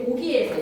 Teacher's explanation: 우리말에서의 고기에서의 고는 터지는 듯한 K의 파열음이라면 모음과 모음 사이에서의 기는 의문에서의 유성음으로서 목청을 울립니다. 고에서는 무성음이지만 고기 했을 때는 유성음으로서 목청을 울린다라는 거죠